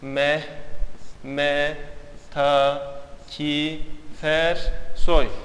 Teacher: Gördüğünüz gibi bitişik bir şekilde söylendiğinde, yazıldığında, hızlı bir şekilde telaffuz edildiğinde buradaki birinci sözcüğün sonundaki ünsüz harf gelip ikinci sözcüğün başındaki ünlü harfe yapışıyor. Vasl oluyor edebiyattaki tabiriyle. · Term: ulama